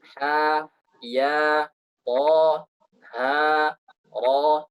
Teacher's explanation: Dan dipanjangkan dengan panjang 2 harakat seperti mad tabi'i.